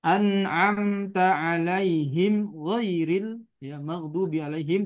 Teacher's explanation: di situ huruf gha yakni sifatnya rakhawa